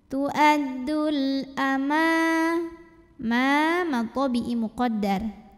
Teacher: Alif Lam Qomariah karena alif lam menghadapi huruf Qomariah yaitu Hamzah maka lam ini dibunyikan dengan jelas dinamakan dengan izhar qomari